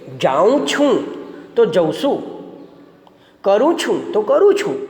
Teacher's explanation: છેલ્લે જે અનુસ્વાર આવે છે એ અનુસ્વાર આપણે આપણી બોલીમાં ઉચ્ચારતા નથી